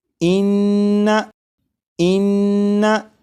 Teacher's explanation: नून मुशद्दद की अदायगी के वक्त ज़बान तालू से लगेगी